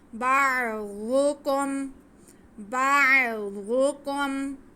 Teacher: باعو, باعو, وَقُلْنَا اهْبِطُوا بَعْضُ, آگے کاف پہ پیش اور میم ساکن, باریک کاف ہے, موٹا نہیں کرنا